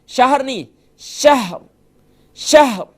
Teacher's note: یعنی کہ ہا محسوس ہونا چاہیے کہ آپ اس کے اوپر سکون پڑھ رہے ہیں. اگر ہا کے اوپر سکون نہیں پڑھیں گے تو یہ جو ہے یقیناً ایک آپ بہت بڑی غلطی کر رہے ہوں گے.